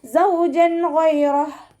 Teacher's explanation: ഹ അക്ഷരത്തിൻ്റെ സൗണ്ടിനെ clear ആക്കിയിട്ട് ഉച്ചരിക്കുക. സൗജൻ ഗൈറഹ് സൈയുടെ സൗണ്ടിന് ഇതൊരു തേനീച്ചയുടെ മൂളൽ പോലെയുള്ള സൗണ്ട് ഉണ്ടല്ലോ, അതാണ് കൊടുക്കേണ്ടത് കേട്ടോ. സീനിൻ്റെ സൗണ്ടായി പോവാതെ നോക്കുക.